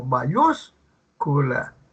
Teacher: Es la palabra que lleva el acento, la sílaba tónica, en la antepenúltima sílaba, como mayúscula. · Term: palabra esdrújula